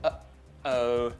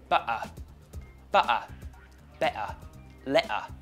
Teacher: another feature of the Cockney accent something called the glottal stop when you meet a t sound especially at the ends of words or in the middle between two vowels you're going to replace it with something called a glottal stop this is the same sound you get in the word uh-oh